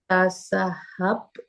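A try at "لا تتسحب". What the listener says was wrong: Kurang 1 hurufnya. Oke, taknya 2 ya. La tatasahhab. La tatasahhab.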